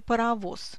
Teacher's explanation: оглушение звонкого согласного произойдет и на конце слова